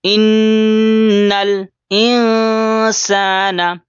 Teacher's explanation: گنہ یعنی تھوڑی دیر آواز کو ناک میں چھپاتے ہیں